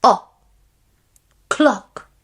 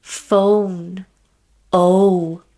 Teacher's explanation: we have a short sound o clock here we have a long sound phone oh